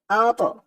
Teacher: এই তোয়াটা হচ্ছে কলকলার হরফ, ধাক্কা দিয়ে পড়তে হবে